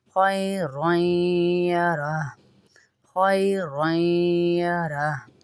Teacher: रॉई में गुन्ना हो रहा है